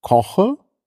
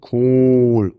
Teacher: die Länge unterschiedlich aber auch die Qualität der vokade und oh der kurze ist offen der lange ist geschlossen